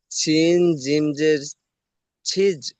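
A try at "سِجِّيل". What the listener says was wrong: হ্যাঁ, তাহলে সিনটি জিমের সাথে যুক্ত করবেন। আপনি পড়েছেন সিন জের সি, জিমের সাথে যুক্ত হয়নি। বলেন সিন জিম জের সিজ,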